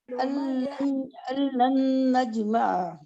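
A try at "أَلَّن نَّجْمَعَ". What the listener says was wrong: غنہ کریں نا، نجمع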